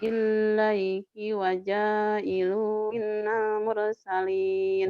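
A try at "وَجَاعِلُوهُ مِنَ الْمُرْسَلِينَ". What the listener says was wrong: Bukan minal. Waja'iluhu minal. Waja'iluhu minal. Waja'iluhu minal. Lu-nya panjang. Waja'iluhu minal. Minal. radduhu ilaiki wa ja'iluhu minal mursalin.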